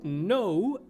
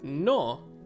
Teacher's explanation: in english you say no and the o kind of sounds like an o u no but in spanish we just say no